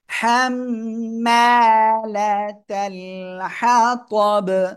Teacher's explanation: হাম্মা লাতাল, লাম জবর লা, তা লাম জবর তাল, লাতাল, হা জবর হা, ত জবর ত, হা ত বা জবর হা ত বি, ওয়াকফ করলে বা সাকিন কলকলা হয়ে যাবে। হাম্মালাতাল হাতাব, সবাই জোরে বলেন।